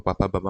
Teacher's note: ओष्ठ, ओष्ठ में पापा बाबा में तो दोनों लीप्स अपन आपस में टच हो रहे हैं, इसलिए ओष्ठ हो जाएगा